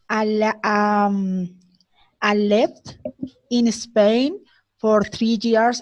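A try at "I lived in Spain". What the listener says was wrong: Esta te sonó como si fuera left. Y es I lived. Sí, con D. I lived.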